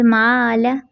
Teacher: लाम पर ज़बर है, बगैर खींचे बगैर झटका दिया मारूफ तरीके से